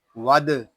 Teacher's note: دال ساکن ہے، اس میں کلکلا خوب ظاہر ہوگا